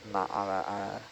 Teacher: So where there are two A's together, there would be a glottal stop in between.